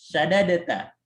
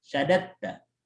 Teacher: Tapi karena dia dal dengan ta itu idgham, biasanya diidghamkan